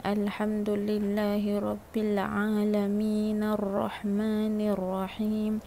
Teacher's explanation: Al-alamin dekat situ dah tak jadi mad arid li sukun. Dia jadi mad asli biasa.